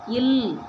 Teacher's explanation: மேல்வாய் பல்லின் அடியை நாக்கின் ஓரங்கள் தடித்து நெருங்குவதால் பிறகுது